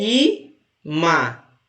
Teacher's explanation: São duas sílabas. E a penúltima é mais forte, que é imã.